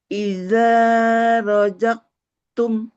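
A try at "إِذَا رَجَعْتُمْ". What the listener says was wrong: Gak boleh rojak tuh huruf ain, bukan huruf kaf. Idza roja'tum. Enggak rojaktum, enggak pakai huruf Kak. Idza roja'tum.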